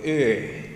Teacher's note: the German ü, that's a front close vowel.